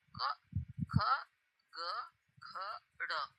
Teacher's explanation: यह जो हमारे वर्ण है यह कंठ से बोले जा रहे हैं अर्थात हमारे गले में कंपन होता है